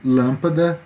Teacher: E as proparoxítonas. A sílaba tônica é a antepenúltima sílaba.